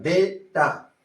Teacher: So your stress falls on the first syllable. Then ta. Data, not data.